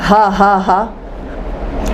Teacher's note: ہوا نکالنی ہے، بالکل ووکل کارڈ کو نہیں یوز کرنا ہے، صرف ہوا نکالنی ہے